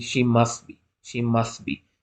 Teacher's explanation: we know this is a consonant cluster must and it will be reduced to just mass so it will be like sorry she must · So it will be like, sorry, she must be, instead of must. So T will be skipped.